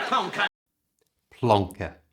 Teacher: To say this like a native English speaker, change the ER at the end to the schwa sound. That's that little sound that's so common in English.